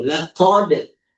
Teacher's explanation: qaf, harful isti'ala, huruf yang penyebutannya agak berat, kemudian seakan-akan bunyi O gitu